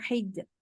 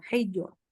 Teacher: jangan dibaca hijau ya, jangan ditebelin, tapi ditipiskan